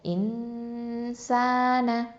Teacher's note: இஹ்ஃபா சட்டம் இருக்குது. அப்போது குன்னா செஞ்சு மறைச்சு ஓதணும். அப்போது இன்சான, சீன் ஃபத்ஹா அலிஃப் சகீரா ச, 2 ஹரக்கத்தை நீட்டணும்.